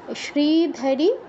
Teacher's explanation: আর আমাদের ধতে একটু দীর্ঘ হয়ে গেছে শ্রীধারী এখানে ধতে দীর্ঘ হয়ে গেছে এটা দীর্ঘ করা যাবে না